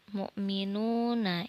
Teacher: ini ada wawu, yang mana huruf waw ini mati, sebelumnya ada harokat dhammah. Ini disebut dengan mad tabi'i. Dibacanya 2 harokat ya, atau 2 ketukan.